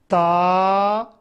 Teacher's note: ज़बान की नोक ऊपर वाले दांतों के पीछे रखकर ता को पढ़ेंगे। ता, ऊपर 2 नुक्ते।